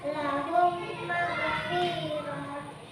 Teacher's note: dibaca memasukkan huruf mim ke dalam huruf mim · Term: idgham mutamasilain